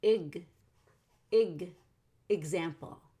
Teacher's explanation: example actually has a g sound in the x